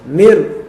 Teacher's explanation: Tapi kalau mir ya, mir dia idgham tapi tidak ada gunnah. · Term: idgham tanpa adanya gunnah